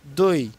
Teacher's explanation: অটা হচ্ছে পূর্ণ স্বরধ্বনি দই ইটা হচ্ছে অর্ধ স্বরধ্বনি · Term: দ্বিসরধ্বনি